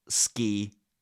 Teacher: it sounds like it has a g in it because it's not aspirated